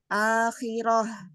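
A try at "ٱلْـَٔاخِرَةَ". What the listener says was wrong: bukan roh, bukan ha kecil, ha besar. Kurang ke bawah ya. Ha besar itu dari tenggorokan bagian bawah. Kalau dia ke atasan, ke tengah itu jadi ha kecil ya.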